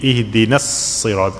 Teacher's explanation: that alif is silent. Okay, you have to connect the noon with sad